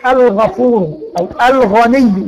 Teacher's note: يبقى اذا وقع بعد ال التعريفيه حرف الغين يبقى حكمه ايه؟ الاظهار